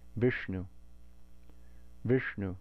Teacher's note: if we say Viṣṇu, this is a cerebral sibilant · the ṇa following the ṣa is also cerebral